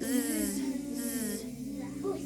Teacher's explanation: Voiced, it makes our vocal cords vibrate